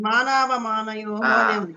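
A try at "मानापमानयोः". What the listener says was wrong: పా ప్రొనౌన్సియేషన్ మానాపమానయో అది కరెక్ట్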